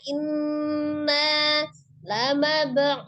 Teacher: Mab'utsun. Inna, ya nun tasdidnya ditahan ya. Nun tasdidnya inna lamab'utsun.